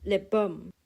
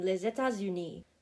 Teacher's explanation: the silent final consonants are still sometimes pronounced because of liaison